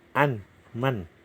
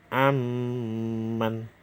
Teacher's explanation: Bacanya yaitu aman. Nun mati, nunnya tidak usah dibaca, langsung masuk ke mim. Makanya dikasih sida aman. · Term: idgham bihuna